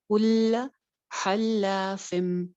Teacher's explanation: ہا درمیان حلق سے کی ساؤنڈ کے ساتھ